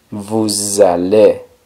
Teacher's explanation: la S de vous se junta con la A y se pronuncia vous allez. El sonido que da ahí la S es un sonido z.